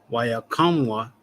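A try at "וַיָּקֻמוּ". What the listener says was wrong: Yakwam. That one that looks like a P is actually kwa. So waya. Kwamwa.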